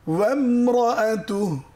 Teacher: রয়ে তাকরির আছে, রটা কেঁপে যাবে, ভাইব্রেট করবে।